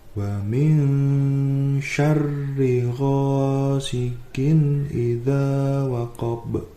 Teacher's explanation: Untuk ayat yang ketiga ini, hukum bacaannya yang pertama adalah ikfa, di mana nun sukun bertemu dengan shin, dibaca samar dan juga mendengung